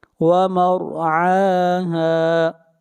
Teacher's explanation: را کو موٹا پڑھیں گے، را سے پہلے زبر ہے